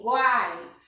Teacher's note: Percebe que o A ele sai muito mais forte do que o U e do que o I? Nesse caso, a gente tem o U no caso será uma semivogal, o A vogal e o I semivogal, tá? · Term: tritongo